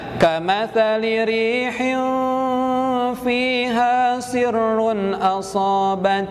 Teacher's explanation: Kemudian kita akan temukan lagi hal yang serupa, yakni di kalimat kamatsali rihin fiha, yakni kasrah tain menghadapi huruf fa, itu kembali ikhfa. Jadi dibacanya harus disamarkan mendekati huruf fa.